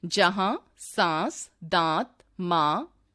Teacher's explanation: अनुनासिक का उच्चारण मुंह तथा नाक दोनों से किया जाता है।